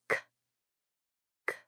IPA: k